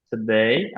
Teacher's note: এরকম হালকা টাচ হবে জাস্ট। today আমার মেইন ফোর্সটা যাবে দেইতে, স্ট্রেসটা আর কি।